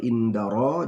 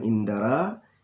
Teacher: Ro adalah ro tafkhim, ro dibaca tebal